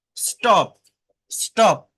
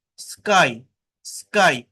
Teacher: যখন পি, টি, কে এই বর্ণগুলো এস এর পরে বসে, আবারও বলছি এস এর পরে বসে, মানে এই পি, টি, কে এর আগে যদি এস থাকে, তাহলে সেটা নন অ্যাসপিরেটেড হয়।